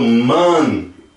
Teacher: Agora, quando eu falo man, você pode ver que o som está mais para fora, está mais aberto, mais para fora